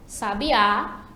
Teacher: A sílaba tônica é o sa, a primeira sílaba, sa, sábia, e identificada ali pelo acento, sábia. Já sabiá, já a sílaba tônica é a última